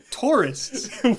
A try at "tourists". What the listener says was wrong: Tourists. I was trying to not accidentally call them terrorists, so I lowered the R a little bit.